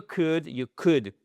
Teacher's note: Le L, on ne le prononce pas.